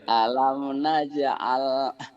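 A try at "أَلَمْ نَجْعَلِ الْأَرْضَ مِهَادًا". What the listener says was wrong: Alil. Alil. Ada lilnya tuh Pak, ada barisnya. Alam naj'alil arda mihada.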